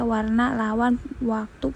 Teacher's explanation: diucapkan dengan bibir bundar dan sedikit mendekat seperti ketika mengucapkan vokal U. Contoh kata warna, lawan, waktu, posisi awal dan tengah kata. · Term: fonem semivokal